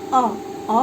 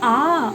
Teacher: अब हम यहाँ देखते हैं कि अगर हम ह्रस्व अ और अ ये दोनों ह्रस्व हैं, इनके उच्चारण में ह्रस्व हम किसको कहते हैं, जिसके उच्चारण में एक मात्रा का समय लगता है उसको ह्रस्व वर्ण कहते हैं। तो यहाँ अ बोलने में हमको एक मात्रा का समय लगता है, लेकिन आ बोलने में हमको 2 मात्रा का समय लगता है, यानी जिन वर्णों के उच्चारण में हमको 2 मात्रा का समय लगे वो सब के सब दीर्घ कहलाते हैं।